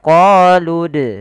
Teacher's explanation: apabila ada huruf dal berharokat sukun, maka kita baca dengan bacaan qalqalah, harus memantul. Qalqalah artinya memantul.